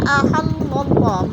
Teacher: اور احل اللہ، اللہ پر پڑھا جائے گا اس لیے کہ اللہ سے پہلے لفظ لام کے اوپر زبر ہے تو اللہ کو پر کر کے پڑھیں گے۔ اور تب تغی، تب با پر قلقلہ ہے، اس کو ہلا کر پڑھنا ہے با کو۔